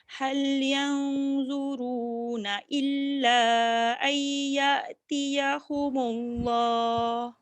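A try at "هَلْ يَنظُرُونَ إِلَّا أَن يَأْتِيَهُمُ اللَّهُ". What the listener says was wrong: Ambil balik illa ayya. Ay tu tambah sikit dulu tak cukup.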